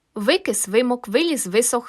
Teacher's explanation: звук в перед и а також і вимовляємо за допомогою губ і зубів а отже він губно зубний